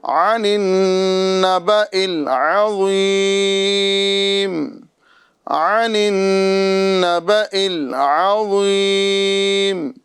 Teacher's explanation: یہاں پر آپ دیکھ رہے ہیں کہ یہاں نون مشدد ہے لہذا نون مشدد میں ایک الف کا ہم گنہ کریں گے